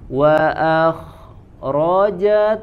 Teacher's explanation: Wa akhra, sini mengalir tanpa ada jeda. Jadi jangan wa akhra, jangan berhenti dulu di situ. Jangan ada jedanya. Wa akhrajat, tapi sambung ya, karena roh khawas lagi dia harus keluar suaranya mengalir 100%, tidak ada jeda.